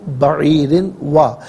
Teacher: بعیر میں را کے نیچے 2 زیر کی تنوین ہے، را کو باریک کر کے پڑھیں گے